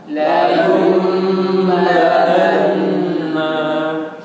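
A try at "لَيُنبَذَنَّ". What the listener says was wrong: Nanya ndak dibaca. Nanya kan dimatikan karena dia akhir. Nah, ya, nanya jangan dibaca karena akhiran. Cuma ditahan aja, gunakan. Layung badan, ya gitu.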